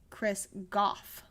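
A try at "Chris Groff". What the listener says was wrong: Oh no, there's an R in there.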